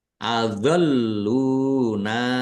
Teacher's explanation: Harus dibaca panjang lima harakat. Adoluna lamnya ada tasdidnya dibaca dobel ditekan dan ditahan biar tampak dobel. Lam dumah wau sukun mad thobi'i.